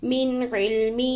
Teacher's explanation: یہاں پہ نون پہ ہم نے غنہ نہیں کیا کہ کوئی حروف حلقی میں سے آگے عین ہے اور ہا کے نیچے کھڑی زیر کے ساتھ مد ہے اس لیے اس کو کھینچ کر پڑھیں گے.